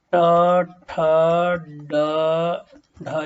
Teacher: मूर्धा मतलब जब जीभ ऊपर तालु में सटती है। मूर्धा में जीभ थोड़ी सी मुड़ती है ना, दांत से ऊपर थोड़ा सा, ये दांत के ऊपर जो अंदर से वहां लगता है, वो मूर्धा वाली जगह कहलाती है।